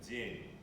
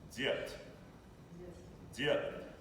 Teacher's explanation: the vowel in the word день is a bit more closed than the vowel in the word дед. It's a bit deeper, a bit lower.